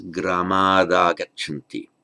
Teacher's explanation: Now, the final unvoiced consonant, as in gramat, before a vowel, the t changes to a d, it just voices itself under the influence of the following vowel. So gramat agachanti becomes gramad agachanti.